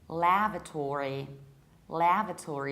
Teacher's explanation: you don't reduce the ending, but actually you pronounce it fully. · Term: American accent